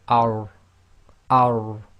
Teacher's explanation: Be very careful not to get into the habit of rolling, and you should feel the top of your, or the tip of your tongue touching the front hard palate at the front top portion of your mouth